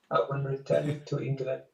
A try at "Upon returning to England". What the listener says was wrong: You know, I wish when you said upon that you would pronounce that a little bit more clearly. Upon returning to England.